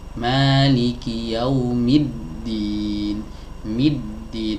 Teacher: Ini yang disebut dengan idgham syamsi. Jadi kasroh yang ada pada huruf mim ini langsung masuk segera ke huruf dal. · huruf lam yang ada di sini dia tidak dibaca karena setelahnya ada huruf yang bertasydid. Ini yang disebut dengan idgham syamsi.